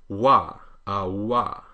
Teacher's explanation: the lips are rounded in a sort of oo shape, so you get wa. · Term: English W